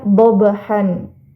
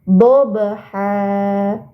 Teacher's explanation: Karena ini di dekat waqaf, maka fathatain-nya berubah menjadi fathah, ya. Bukan dibaca dhabhan, tapi menjadi dhabha. Panjangnya cukup 2 harokat saja. Ini dinamakan mad iwad.